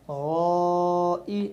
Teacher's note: اب اپنا الف مدہ کے بعد حمزہ آ رہا ہے تو الف مدہ کی مقدار کو 2 سے 3 سیکنڈ کے برابر کھینچ کر پڑھیں گے